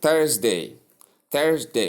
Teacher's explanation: Note the voiced th sound. The voiced th sound. In fact, some people even omit the sound and call T sound.